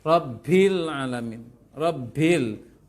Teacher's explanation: Huruf ba tidak boleh mengalirkan nafas.